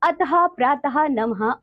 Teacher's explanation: विसर्ग का उच्चारण हल्के हु की भाति होता है